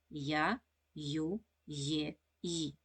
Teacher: впевнена що вимовляючи я ю є та ї ви усі чуєте звук й